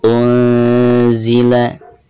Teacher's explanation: Nun sukun berhadapan dengan huruf zai, maka suara nun sukun tersebut harus disamarkan disertai dengan gunah. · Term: ikhfa